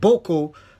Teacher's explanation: the Hausa word Boko, the first vowel is long and the second pronounces a low tone